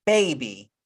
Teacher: But when I say baby, do you hear the sound y? Because Y usually makes the sound y, but we don't hear that. Instead, we hear E, baby. So you know that Y is a vowel here.